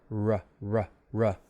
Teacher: Air is kind of gliding over the tongue. The tongue tip is not touching anything. It's not touching up there. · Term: glide sound